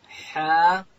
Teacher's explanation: ح ادا کیږي د ستوني په منځ کښې